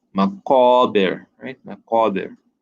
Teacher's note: Here, this is a hard sign, so we need to really pronounce that airy nature when reciting hatta zurtumul maqabir. Remember, qaf, round sound, right? A deep sound, not as flat as a calf.